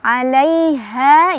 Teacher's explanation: Alaiha, ini haknya gede, lebih bergetar, ha dari bawah tenggorokan